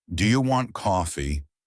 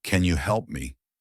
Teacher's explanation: Your voice should rise at the end.